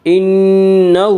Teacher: انہ ہا کے اوپر الٹا پیش ہے، الٹا پیش قائم مقام ہے واو مدہ کے، اس لیے الٹا پیش کو 1 الف کے برابر کھینچ کر پڑھیں گے